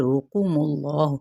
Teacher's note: را پیش ہونے کی وجہ سے پر پڑھا جائے گا